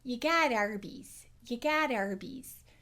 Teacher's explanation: the R changes the vowels in front of it.